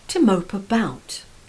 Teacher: notice how the stress is again on the preposition about